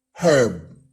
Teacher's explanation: Pag sa American English, ang pronunciation ng word na ito ay herb. But in British English, it is pronounced with an H, as in herb.